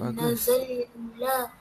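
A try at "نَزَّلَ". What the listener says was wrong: Yang ni Zaid ada sabdu. So kena baca nazzala.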